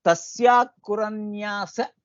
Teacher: यद्यपि अत्र विसर्गः अस्ति, किन्तु तद् जिह्वामूलीयः, कारणं परे ख अस्ति, ख अस्ति इति कारणात् जिह्वामूल्ये तस्य तस्याकुरन्यास इति भवति। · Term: जिह्वामूलीय उच्चारणम्